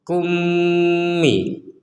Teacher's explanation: kita masukkan mim yang pertama kepada mim yang kedua sehingga langsung kummi.